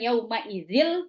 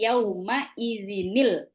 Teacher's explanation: ketika ada kasrain sesudahnya ada alif lam maka bacanya bukan yaumaidil tapi yaumaidinil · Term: Nun kecil